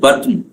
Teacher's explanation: the last n is a syllabic one. It is treated as a syllable.